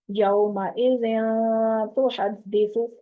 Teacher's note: नाक में दो हरकत जितनी आवाज रोकनी है इस तन्वीन की